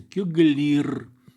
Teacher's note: в слове кёгле выпадает гласное е, да, и получится кёглир.